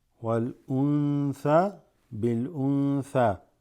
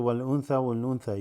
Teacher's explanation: Why is it slightly extended? Because of the tha after the nun sakina